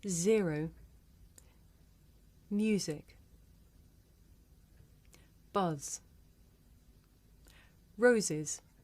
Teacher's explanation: z is a voiced alveolar fricative · zero music buzz roses good when you say s or z we leave a narrow passage between the tongue tip or blade and the alveolar ridge along the center of the tongue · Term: alveolar phonemes